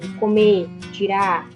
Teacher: A eliminação do R no infinitivo